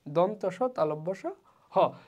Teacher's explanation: তো কাছাকাছি এসে তারা যখন একসঙ্গে যুক্ত না হয় তখন কি হয়, বাতাসটা কি প্রায় বন্ধ একটা জায়গা দিয়ে, যে ছোট্ট একটা গ্যাপ দিয়ে যখন আমরা বাতাস বের হয় এরকমভাবে আর কি যে ঘর্ষণের সৃষ্টি হয়, বাতাসের পথটা যেটা আছে সেটা ক্রমশ কমে আসে, ছোট হয়ে আসে। তো যার ফলে একটু ঘর্ষণের মতো সৃষ্টি হয় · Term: ঘর্ষণজাত ধ্বনি